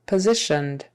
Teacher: syllable stress on the second syllable positioned that s in the middle is pronounced like a z